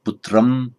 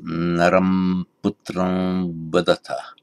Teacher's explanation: If you're saying putram in isolation without any sandhi, just pronouncing it as an ordinary M, putram, but with semi-vowel, the V following, it becomes more of just a nasal vowel